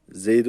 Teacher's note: Peltek Z dilimizin ucunu hafif ısırarak Z diyoruz